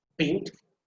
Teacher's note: the rest of the syllables, they are uttered quite silently. But the first one that is emphasized, beautiful. · rest of the syllables, pronounce them very, you can say softly, okay? But go hard on the first syllable